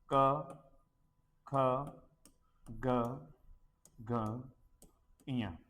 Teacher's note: क वर्ग का उच्चारण है वो कंठ से होता है